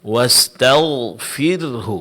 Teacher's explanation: Kemudian terakhir huruf ghain wastagfiru. Di sini yang ditebalkan hanya huruf ghain. Sedang huruf ro di sini tipiskan karena dia sukun sebelumnya kasrah